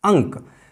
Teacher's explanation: अनुस्वार का उच्चारण हमने क के पंचम वर्ण के रूप में किया, ङ के रूप में किया